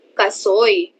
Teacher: Ito ay may diptonggong oy at ito ay nakikita sa huling pantig ng salita na soy.